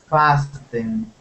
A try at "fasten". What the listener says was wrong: the t is silent okay F no T